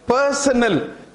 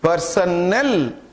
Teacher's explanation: the B option is pronounced as personal, stress is on the first syllable, whereas when you pronounce option D, personnel, the stress is on null